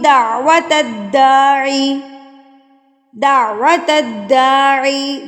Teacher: دال کے اوپر تشدید ہے تو اس تا کو ہم نے دال کے ساتھ ملانا ہے، پھر دال کو اپنی حرکت کے ساتھ پڑھنا ہے۔